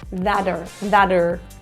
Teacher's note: the T turns to a flat T. And a flat T sounds like a D. So instead of a that, it will sound more like a that, thater, thater.